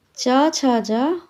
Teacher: च छ ज मूर्धन्य नहीं बल्कि तालव्य व्यंजन है।